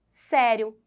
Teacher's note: também e por último Sério que é uma paroxítona É porque ela tem a penúltima sílaba como sendo a mais forte